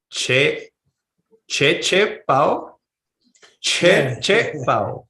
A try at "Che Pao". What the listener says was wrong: Good. Che Pao. Nice. That's great. Your pronunciation's getting really good.